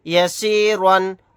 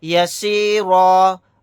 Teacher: زیر سی، یسی، را دو زبر ون، یسیرن، آگے آیت یسیرا، آیت کرنے کی صورت میں را الف کے ساتھ ایک زبر پڑھیں گے، دو زبر کو نہیں پڑھیں گے